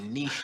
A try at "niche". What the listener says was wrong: no it's niche the C is silent